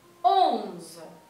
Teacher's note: La O y la N es una O nasal.